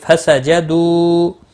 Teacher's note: مد منفصل ہے 3 الف کے برابر کھینچ کر پڑھیں گے